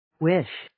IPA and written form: wɪʃ (Wish)